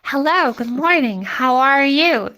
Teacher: You're going up even higher than C4. You're going like, hello, like up to an F4, which is like way higher than, what you showed me at the very start.